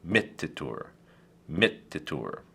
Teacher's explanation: it goes back to the antepenultima and is pronounced mittitur